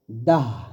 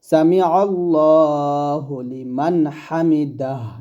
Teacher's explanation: শুধু দা বললে হবে না দাহ বলতে হবে